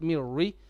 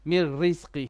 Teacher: On the word mir rizqi, ra, it has to be light. Mirri, not mirri.